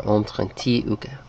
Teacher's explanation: notice they say the R's here like kind of a French R.